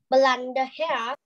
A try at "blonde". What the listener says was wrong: We don't say the E. Blonde.